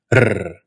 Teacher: For this consonant, your tongue goes right up against your alveolar ridge. It softens a little bit to allow air to come through, and as that air comes through, it vibrates your tongue up and down against that ridge. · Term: trilled R